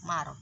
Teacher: Marqodina, tapi fokus kita di sini ya, ro sukun ini. Ro sukun yang didahului fathah maka harus moncong.